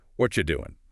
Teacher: And the vowel in r often gets reduced right down to a quick o sound, a schwah or it just gets squished as the words link. and the G at the end of doing pretty commonly dropped in casual speech. So, what are you doing becomes what you doing? · the G at the end of doing, very commonly dropped in casual speech.